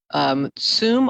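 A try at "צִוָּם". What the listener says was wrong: Let me first correct the nikud on the first one. It's not tsum like fast, but tzivam, commanded them.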